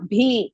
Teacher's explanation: ಭಿ ಇಸ್ ಮಹಾ ಪ್ರಾಣ ಹೃಸ್ವ